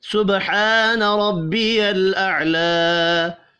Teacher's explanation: سب با ساکن پر قلقلہ کریں گے